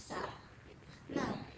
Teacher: huruf sa itu dia keluar ketika ujung lidah kita itu bertemu dengan ujung gigi seri